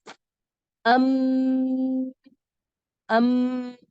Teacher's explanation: میم دونوں ہونٹوں کی خشکی سے ادا ہوتا ہے۔ مثال کے طور پر ام ام، جب آپ دونوں ہونٹوں کو سختی سے ملاتی ہیں اور خشک یا ڈرائی پارٹ آپ کے ہونٹوں کا لگتا یا جڑتا ہے تو میم ادا ہوتا ہے۔